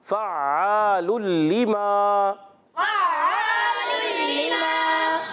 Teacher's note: ادغام بھی کرنا ہے مگر بغیر غنے کے ادغام کرنا ہے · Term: ادغام بلا غنہ